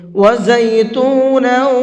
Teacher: وَزَيْتُونًا وَنَخْلًا، یہاں تا کے اوپر تنوین ہے اور اس کے بعد میں واو ہے۔ تنوین کے بعد میں واو آتا ہے تو وہاں پر بھی غنہ کر کے پڑھتے ہیں